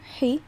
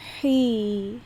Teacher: it's much longer right you extend the e sound for a longer time